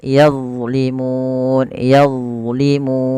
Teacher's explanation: Jangan sampai yang pertama dibaca dengan zai yazlimun. Ini banyak terjadi yang menggantinya dengan huruf ee zai.